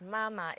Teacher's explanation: mama is with the first tone and not with the third tone